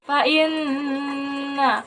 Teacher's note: Hukum tajwidnya gunnah, cara bacanya didengung sekitar 2 harokat.